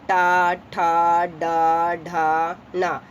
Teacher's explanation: मूर्धा जो जबान को हम लोग क्या करते हैं? टेढ़ी करके, उल्टा करके पढ़ते हैं। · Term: मूर्धन्य